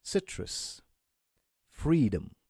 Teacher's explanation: Those are the words that have a schwa sound because those vowels are unstressed. They are not a part of a stressed syllable, okay?